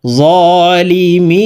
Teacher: লি মিম ইয়া জের মি নুন জবর না জালিমিনা মি এখানে তিন আলিফ টেনে নুনকে সাকিন করতে হবে কারণ মদের হরফের বামের হরফে ওয়াকফ হইলে মধ্যে আরজি তিন আলিফটা